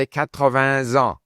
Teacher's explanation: the S at the end of that word now carries on into the following word, which starts with a vowel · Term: liaison